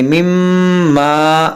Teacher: میم میں غنہ کریں گے, مما الف مدہ کھینچیں گے